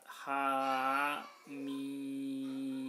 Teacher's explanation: Nah, haknya dibaca 2 harokat, ha mim. Haknya 2 harokat, mimnya 6 harokat. Haknya mad lazim harfi mukhaffaf, mimnya mad lazim harfi musyabba.